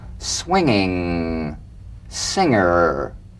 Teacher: the ng in the middle of the word with no drumbeat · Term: medial ng